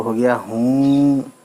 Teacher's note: छोटी है वाव, है ना, उल्टा पेश हो गया हु, नून गुन्ना आया तो हो गया हूँ, है ना। नाक से आवाज़ आने लगती है नून गुन्ना से लगाने से